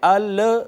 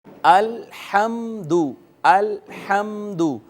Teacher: قلقلہ کہتے ہیں آواز لگ کر ٹکرا کر واپس آتی ہے، الحمد کہتے ہیں، ال نہیں ہونا چاہیے۔ جب حمزہ لام کے ساتھ ٹچ ہوگا تو فوری بعد ہا کو ہم ادا کر دیں گے